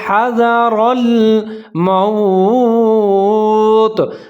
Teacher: زال کے اوپر زبر ہے، حاذا، را کے اوپر زبر ہے، آگے لام کے اوپر ساکن ہے تو را کو موٹا پڑھ کے اس کے ساتھ ملائیں گے ، حذر الموت، میم کے اوپر زبر ہے، واو ساکن ہے،